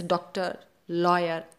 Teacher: ऐसे ही एक ध्वनि अंग्रेजी के प्रभाव से हिंदी में सम्मिलित हुई है, जिसे ओ की ध्वनि कहा गया है। यह हिंदी के आ तथा ओ के बीच की ध्वनि है।